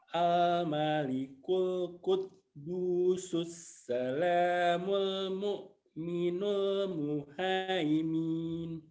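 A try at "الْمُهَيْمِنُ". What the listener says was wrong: Pendek. Pas berhenti dipendekkan. Muhaimin. Karena tidak ada tanda panjang.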